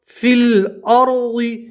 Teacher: یا نہیں پڑھیں گے, صرف فی پڑھیں گے, کھینچنا نہیں ہے